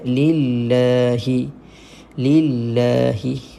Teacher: kita baca dengan nipiskan kalimah Allah dan baca panjang dua harakat jangan lupa dua harakat di sini Alhamdulillahi boleh dapat Oke Eh